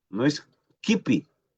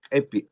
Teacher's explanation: Para pronunciar como E muy abierta, y el pi es incluso menos abierta.